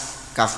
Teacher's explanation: pangkal lidah yang agak ke depan mengenai langit-langit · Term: huruf Kaf